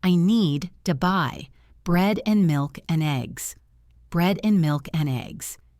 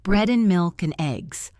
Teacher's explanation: By reducing the word and, you put the focus on the nouns, which are the important information.